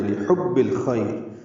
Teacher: حا وسط حلق سے ادا کرنا ہے ، با سے ملانا ہے، با کو الخیر کے لام سے